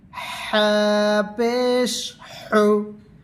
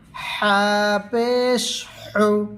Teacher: গলার মধ্যস্থল থেকে আদায় করিবে।